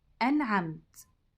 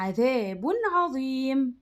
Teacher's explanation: يعني هنقول النون زي ما هي بدون غنة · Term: الإظهار الحلقي